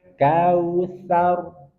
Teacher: Coba ainnya sedikit dialirkan karena dia punya sifat bainah.